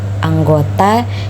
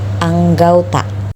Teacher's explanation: perubahan bunyi vokal tunggal atau monoftong menjadi dua bunyi vokal atau vokal rangkap atau yang disebut dengan diftong secara berurutan. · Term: diftongisasi